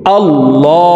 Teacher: তাসদীদওয়ালা মিমের সাথে 3 সেকেন্ড পরিমাণ গুন্নাহ করে ধরে রেখে পড়ব